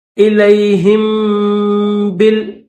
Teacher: ہا کو میم کے ساتھ ملا کر پھر با کو ظاہر کریں گے